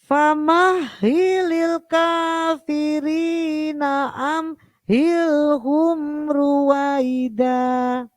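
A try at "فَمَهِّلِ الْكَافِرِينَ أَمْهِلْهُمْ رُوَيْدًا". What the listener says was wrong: Famahililnya jangan dilepas. Famahi.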